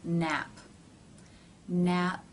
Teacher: the stop of the airflow happens as the lips remain closed and the release when they part and the air comes through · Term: stop consonant